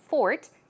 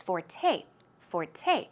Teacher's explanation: It's F-O-R-T-E, but it's pronounced forte. The stress goes on the second syllable